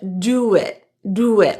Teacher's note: It's a linking W sound between the vowel in do and the vowel in it to keep the speech smooth.